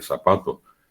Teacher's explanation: Es lo mismo decir zapato con Z que zapato con S. Y nosotros decimos acá directamente zapato.